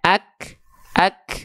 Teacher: kita sudah tahu ya Kaf itu harus ada percikan nafasnya